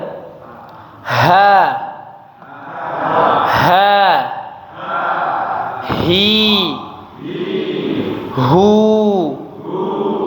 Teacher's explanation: dari tenggorokan, tapi tenggorokan bagian bawah ya. Udaranya mengalir ya. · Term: huruf H